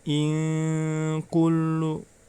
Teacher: Itu termasuk bacaan ikhfa, ya. Maka cara membacanya, nun sukunnya dibaca samar